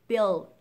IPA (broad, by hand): bɪld